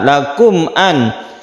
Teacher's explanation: Mim mati bertemu dengan hamzah disebut idhar syafawi. Idhar artinya jelas, mimnya jelas tidak masuk ke huruf berikutnya. Syafawi artinya bibir, artinya makhraj dari mim itu adalah di syafawi, artinya bibir.